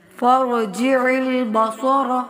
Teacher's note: عین کو وسط حلق سے ادا کرتے ہوئے صاد موٹا پڑھیں گے